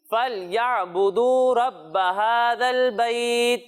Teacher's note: اسے یہاں پر واو مدہ ہو رہا ہے تو اسے ہمیں کھینچ کر پڑھنا ہے